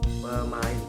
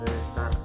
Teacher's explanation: Bilabal adalah bunyi yang dihasilkan dengan menyentuhkan bibir atas dan bibir bawah